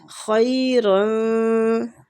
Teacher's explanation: خی خا بھی مستعلیہ حروف ہے، یا آگے خی یا لین بھی ہو رہا ہے، تھوڑا سا کھینچیں گے